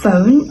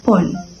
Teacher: korean speakers often pronounce it with a single vowel sound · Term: konglish